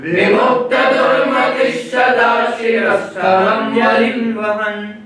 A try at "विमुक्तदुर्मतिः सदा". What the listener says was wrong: इसको ध्यान दीजिए कि दुर्मति ही सदा नहीं बोल, दुर्मति ही सदा नहीं कहना है, दुर्मति ही सदा नहीं कहेंगे, दुर्मति सदा।